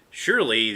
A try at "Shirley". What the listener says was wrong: Yes, Shirley, not Shorely. Shirley.